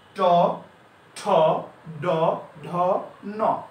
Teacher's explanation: এই বর্ণগুলো, ট বর্গের বর্ণগুলো উচ্চারণ করার সময় আমরা আমাদের এই জিহ্বা মূর্ধাকে স্পর্শ করে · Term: মূর্ধন্য বর্ণ